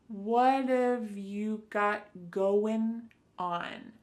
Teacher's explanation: So what and have are going to be pushed together.